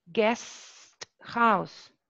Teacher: if the following word starts with a glottal sound, like in guest house, yes, we retain the voiceless alveolar plosive sound